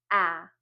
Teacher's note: And we know that that sound is ah. When we make that sound, our mouth is open, we're smiling, and it's a voice sound. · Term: short vowel A